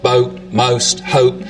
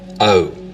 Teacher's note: starts with the tongue further forward in the mouth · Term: goat Froning, goat fronting